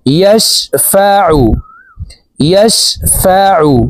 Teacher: আইনকে হলকের মধ্যখান থেকে উচ্চারণ করতে হবে, কারণ আইনের মাখরাজ হলকের মধ্যখান থেকে হবে। আইন পেশ আউ, ইয়াশফাউ, ইয়াশফাউ।